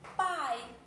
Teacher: E aí, quando eu tenho essa junção de vogal e depois semivogal, eu tenho que... Eu tenho um exemplo de um ditongo decrescente, porque ela começou da mais forte da vogal para depois para a semivogal.